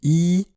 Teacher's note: la bouche n'est pas fermée, mais presque. C'est une voyelle haute ou fermée.